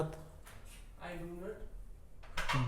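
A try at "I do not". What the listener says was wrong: डू नट नहीं होता भाई, डू नॉट बोलो।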